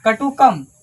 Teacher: क पर अनुस्वार है। अनुस्वार का ध्वनि यहां पे म निकलेगा।